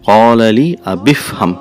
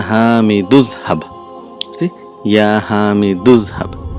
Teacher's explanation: Because Hamzatul Wasl sound is not produced, so there is assimilation of sounds. The two sounds between the Hamzatul Wasl is mixed, they join.